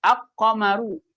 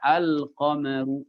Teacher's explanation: Pada kalimat qamar lamnya izhar, lamnya jelas.